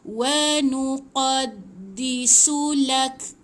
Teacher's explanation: Dia matikan kaf. Okey, kaf ni bila dia mati, dia macam ada bunyi angin yang terlepas. Tetapi dia bukan ada bunyi pantulan.